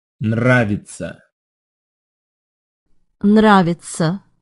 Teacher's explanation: note how the emphasis is on the first syllable